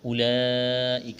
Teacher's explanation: اولئک لمبی مد ہے، کھینچنا ہے، کاف کو باریک کرنا ہے